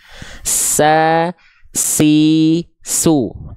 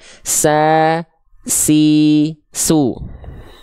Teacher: huruf sin dia punya sifat hams, tapi kadarnya hanya berupa kadarnya mengalir nafas, bukan percikan nafas.